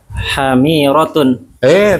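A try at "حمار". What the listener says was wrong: Tanpa tak marbutoh.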